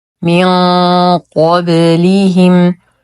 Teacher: من قبلهم نون ساكنه وبعدها حرف القاف الحكم اخفاء حقيقي مع غنه كامله مفخمه لان الحرف الذي بعد النون الساكن حرف الق وهو من حروف